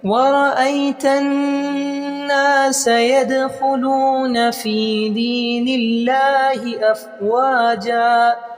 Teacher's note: دال ساکن ہے تو قلقلہ کریں گے